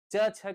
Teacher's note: हमारी जिह्वा ऊपर तालु में जाकर के स्पर्श कर रही है, तभी हम च का शुद्ध उच्चारण कर पा रहे हैं।